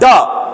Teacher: इनका यदि उच्चारण करो ना, तो आप जो है झटके के साथ जिह्वा तालु को टच करेगी और एकाएक नीचे आएगी, लगेगा कि ऐसे जो है किसी व्यंजन को फेंका जा रहा है। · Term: उत्क्षिप्त व्यंजन